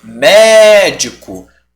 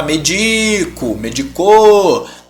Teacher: Médico é uma proparoxítona, chama ele médico. Você estende mais a antepenúltima sílaba. Você não vai falar medico, medicou, não para médico, tá?